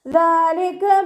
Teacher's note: ദാലിൻ്റെ കൂടെ അലിഫ് സ്വൈറയാണ് വന്നിട്ടുള്ളത്. 2 കൗണ്ട് നീട്ടി കൊടുക്കുക. കാഫിനെ കുറച്ചൊന്ന് ചെരിച്ചിട്ട് ഉച്ചരിക്കാൻ ശ്രദ്ധിക്കുക കേട്ടോ.